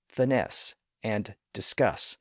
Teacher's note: finesse and discuss which have the stress on the final syllable